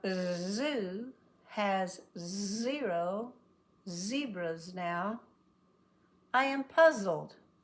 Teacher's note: it barely lets any air get out all the tongue is trying to stop it but right in the middle the air is leaking out and it vibrates very important that it vibrates the zoo has zero zebras now